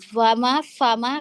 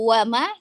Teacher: karena kita tidak menempelkan ujung gigi seri atas kita ke perut bibir ketika membaca Fa Maka nanti akan seperti baca huruf wau